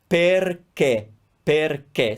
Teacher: when I say closed sound, I'm saying that the two E sounds in that word are the same.